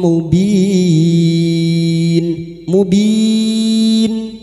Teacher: Bertemunya mad dengan huruf hidup yang dibaca wakaf mad arid l sukun empat harakat kita panjangkan